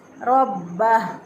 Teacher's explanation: रॉ को अगर कोई मोटा ना पढ़े, बारीक पढ़ दे, रब्बा पढ़ दे, इसको गलत हो जाएगा। इसी तरह बा की पर शद की बजाय इसको पढ़ देता है कोई, अगर मुशद्दद की बजाय इसको मुखफ़्फ़फ पढ़ देता है रब्बा राबा, तो गलत हो जाएगा।